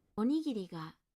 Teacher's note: In some words like rice balls, おにぎりが this downstep occurs almost immediately